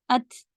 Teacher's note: ता में हम्स की आवाज रहती